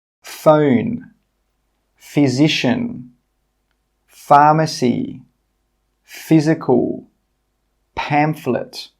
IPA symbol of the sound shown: f